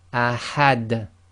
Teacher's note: the dal again becomes sakin, you don't read the dhammatain and you get the echo.